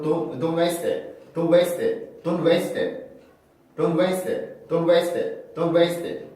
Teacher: 그러면은 이때는 마찬가지로 T를 없애지 않고 S 발음, T 발음을 둘 다 해주고 나서 연음을 시켜줘야 돼요.